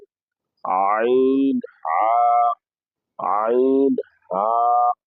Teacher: হলকের মধ্যখান হইতে আইন হা